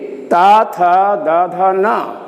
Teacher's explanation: दांत से, बिना दांत को छुए हुए इसको हम बोल नहीं सकते।